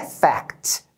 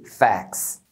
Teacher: o t vai ficar entre uma consoante e o s que foi acrescentado aí por causa do plural eles acabam não pronunciando o t Então você vai ouvir a palavra como fax fax fica mais · No singular é fact, você fala o T. Agora no plural, você não fala o T, facts. You can't deny the facts.